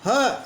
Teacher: कंठ के नीचे यानी फेफड़ों के वहां से इसका उच्चारण हो रहा है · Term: काकल व्यंजन